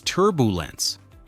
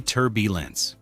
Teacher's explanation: turbulence with the stress on the first syllable